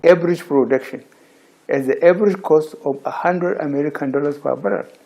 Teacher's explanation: in the Northern Nigerian accent, they would like to replace the sound J, okay, with letters SH, sh.